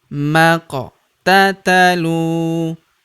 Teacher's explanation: Maq. Pada huruf qaf berharakat sukun kita pantulkan atau kita qalqalahkan